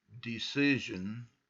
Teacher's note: hear that that's a voiced sh